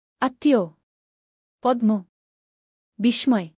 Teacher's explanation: পদের মধ্যে বা শেষে মফলা যুক্ত হলে উচ্চারণে বর্ণের দ্বিত্ব হয় এবং সামান্য নাসিক্যস্বর হয়